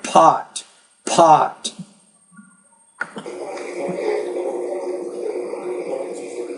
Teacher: You want to produce that P with more air.